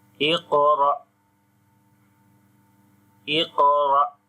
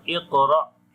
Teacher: here on the qaf we read in a heavy sound this qaf. This is one of from 7 heavy letters, and on the qaf also we make qalqala, and this is weak qalqala.